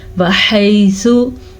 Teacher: वहैसु, ये या लीन है, इसे भी हम खींच के नहीं पढ़ सकते। या लीन, या साकिन से पहले ज़बर हो तो या लीन होता है, फिर इसे नरमी से पढ़ते हैं।